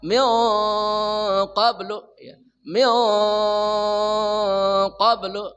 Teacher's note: Jadi nun yang dibaca dengung itu tebal karena bertemu huruf yang tebal. Qaf itu termasuk huruf yang tebal.